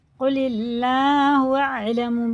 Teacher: اللہ کا لام زیر سے، بڑا قاف ہے، باریک پڑھیں گے اسے